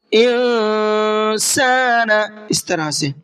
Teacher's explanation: نون ساکن کے بعد میں سین ہے، سین بھی اخفا کے حرفوں میں سے ہے، اس لیے نون کے اندر اخفا کر کے پڑھیں گے۔